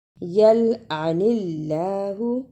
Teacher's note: جس اللہ سے پہلے زیر ہو اسے نرم زبان سے پڑھتے ہیں